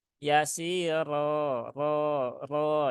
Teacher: ro yang berbaris fathah dia dibaca dengan tebal yaitu dengan cara menaikkan pangkal lidah